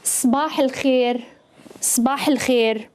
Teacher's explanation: So you kind of run the two words together.